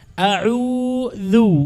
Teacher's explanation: عندنا همزة الأولى والثانية عين، والهمزة مخرجها من أقصى الحلق، المنطقة الأقرب إلى الصدر، هذه يقال لها أقصى الحلق، والعين من وسطه.